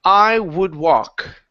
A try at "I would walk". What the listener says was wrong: now the L in walk is silent.